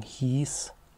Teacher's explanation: ein IE, das im Neuhochdeutschen monophthongisch gesprochen wird, also es ist ein langes I. Wir würden sagen hies, aber das wurde im Mittelhochdeutschen noch diphthongisch gesprochen.